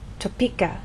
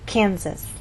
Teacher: we stress the middle part of the word topeka and here the first part Kansas